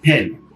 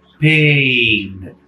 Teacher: pen, som fechado. Pain, um som mais aberto. Até porque ele é fechado e aberto, é muito mais por conta da duração do que qualquer outra coisa.